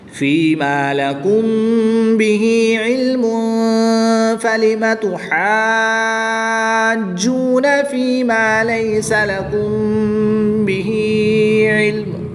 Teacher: میم ساکن کے بعد حرف با ہے تو یہاں پر اخفاء شفوی ہوگا یعنی غنہ ضمانی کر کے پڑھیں گے